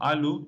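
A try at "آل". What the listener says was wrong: No, there's no U. There's no U. There's no U. This is Arabic. You don't add U. You are trying to read it now in the English.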